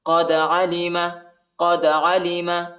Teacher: دال کو جھٹکا دینا ہے، دال حروف قلقلہ کا حرف ہے